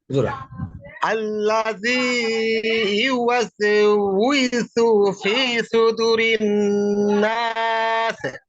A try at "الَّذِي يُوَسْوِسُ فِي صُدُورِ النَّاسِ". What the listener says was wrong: ওকে দেখেন ভাই আপনার এখানে যে প্রবলেম গুলো হয়েছে আল্লাযী ইউওয়াসউইসু বলেন ইউওয়াস এরকম হয়ে যাচ্ছে ইউওয়াসউইসু ইউওয়াস এরকম হয়ে যাচ্ছে ইউওয়াসউইসু হ্যাঁ ওয়াস হ্যাঁ তারপরে